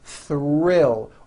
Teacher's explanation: R is the strongest sound of the blend and is louder than the th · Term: th R Blends